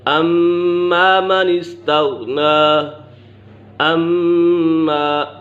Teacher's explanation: اما میم مشدد ہے، میم مشدد میں ہمیشہ غنہ ہوتا ہے